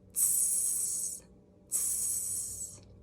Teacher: our tongue tip drops down a tiny bit, and we're extending that airflow obviously longer than a T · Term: S sound